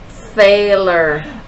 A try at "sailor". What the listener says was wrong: Oh, I didn't quite hear an S there. Can you put your tongue back behind your teeth for me and try it again?